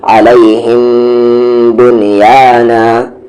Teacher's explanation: یہاں پر میم ساکن کے بعد با ہے تو غنہ کرنا تھا